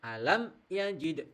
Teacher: Nah, maka harus dibaca jelas suaranya mim sukun itu harus jelas tidak boleh ada samar-samar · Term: izhar syafawi